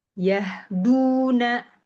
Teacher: Nah, yahduna dia nggak perlu masuk hidung ya kan?